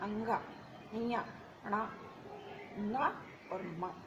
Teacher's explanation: थोड़े नाक से गुनगुनाते हुए जिसका उच्चारण होता है उसको हम अनुनासिक कहते हैं